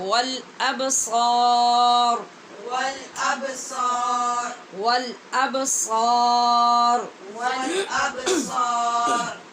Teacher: قلوب قلوب فيه القلوب فيه القلوب والابصار والأبصار سوا نہیں بولنے، واؤ کی آواز پیدا نہیں کیجیے، با کے اوپر قلقلہ ہے اور صاد کو پور پڑھنا ہے، را کو بھی پور پڑھنا ہے